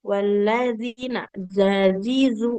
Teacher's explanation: Kalau huruf zal kan waladzina, zazizu, ujung lidahnya menempel ke ujung gigi seri atas.